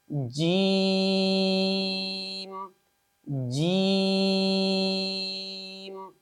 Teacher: لفظ جیم کا مخرج زبان کا بیچ اور اس کے بالمقابل اوپر کا تالو ہے، یعنی جب جیم کو ادا کریں گے تو زبان کے درمیان کو اس کے بالمقابل اوپر کے تالو کے ساتھ لگائیں گے اور اس حرف کو ادا کریں گے۔